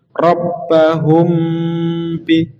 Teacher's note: Mimnya bertemu dengan ba, langsung ke ba-nya. Syafawi itu di mulut, jadi seakan-akan didengungkan tapi di mulut. Rabbahum bi, disembunyikan mimnya. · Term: ikhfa syafawi